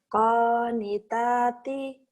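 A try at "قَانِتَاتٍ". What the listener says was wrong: Penekanannya gitu ya. Jadi nggak kaget kan kalau saya kenceng gitu? Jadi kalau konitati, itu nggak enak. Jadi kurang ini, kurang istilahnya ibarat orang yang pidato, yang ceramah, tapi bikin orang ngantuk.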